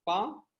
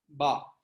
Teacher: But one is the voiced and other one is unvoiced, because pa is unvoiced where your vocal folds are not active. Ba is voiced, your vocal folds are active.